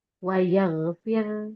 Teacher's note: Kalau sebelumnya itu huruf ee kasrah, maka dia menjadi tipis juga. Wayagfir dia tipis huruf ro-nya karena sebelumnya huruf fa kasrah